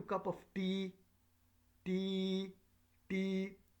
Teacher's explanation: We tend to use this rising intonation pattern when we are asking questions. So the pitch of our voice tends to go up.